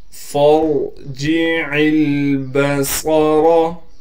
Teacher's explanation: ما ترى في خلق الرحمن من تفاوت فارجع البصر، فا کو را سے ملائیں گے، فا کے بعد الف ہے لیکن الف کو ہم نہیں پڑھیں گے اس لیے کہ فا کو ہم نے را سے ملا دیا، اسی طریقے سے عین کو ہم لام سے ملائیں گے، لام پر ساکن ہے، صاد کو موٹا کر کے پڑھنا ہے اور صاد میں سیٹی بھی ادا کریں گے